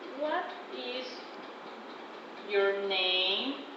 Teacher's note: The stress falls in the last word · usually found in short wh questions. It has four elements and the final word receive the stress. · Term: falling intonation